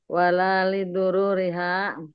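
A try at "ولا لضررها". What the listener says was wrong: Doror Bu, bukan dorur Bu.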